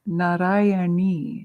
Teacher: Ni has a dot under it, so it's a retroflexive na sound, which you find a lot in Sanskrit and Hindi.